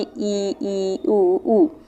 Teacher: next है संवृत, यानी कि क्लोज, जिसमें एकदम बंद रहता है, मुख द्वार लगभग पूरा ही बंद रहता है, यानी कि बहुत थोड़ा सा मुंह खुलेगा तब भी हम बोल सकते हैं इसको